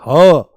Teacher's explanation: पर वो गले में भी स्वर तंत्र के मुख से निकलता है। स्वर तंत्र के मुख से यह निकलता है। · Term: काकल्य व्यंजन